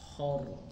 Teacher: Karena sebelumnya rohnya disukunkan dan sebelumnya berharokat fathah dan domah, itu pasti bacanya menjadi tafkhim atau tebal rohnya.